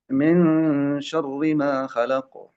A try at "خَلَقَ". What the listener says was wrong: خلق خلق خا ایسے منہ کا جو شیپ ہے نا وہ تھوڑا سا تبدیل ہونا چاہیے جب موٹا حرف پڑھ رہے ہیں تو خلق خا ایک خا ایک ہے خا خلق